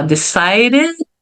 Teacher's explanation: Então, bem suave o som do D. E já vai pro R.